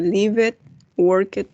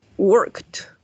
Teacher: Sí, acuérdense que no vamos a pronunciar la E.